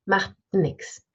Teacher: again we swallow the T math nix and we swallow it we have a nasal release